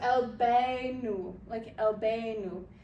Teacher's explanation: The moon letters, they do pronounce the L.